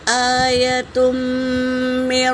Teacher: تنوین کے بعد میم آیا ہے تو یہاں پر غنہ ہوگا، میم کو 2 بار پڑھیں گے، اور نون ساکن کے بعد را آیا ہے تو یہاں پر یرملون کے قاعدے میں سے یا آیا ہے تو بلا غنہ کریں گے۔